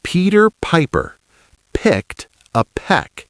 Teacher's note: This one repeats the P sound, called a bilabial sound, because it uses both lips together.